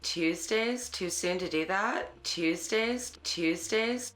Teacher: African Americans in California participate in local features such as Ooh fronting and up talk